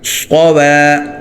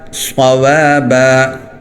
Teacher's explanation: صاد موٹا ہو واو باریک ہو